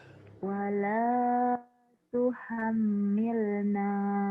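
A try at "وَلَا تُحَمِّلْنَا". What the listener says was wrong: Kurang nyamber. Tuhammil. Wala tuhammilna. Ham. Gunanya ditahan ya. Wala tuhammilna.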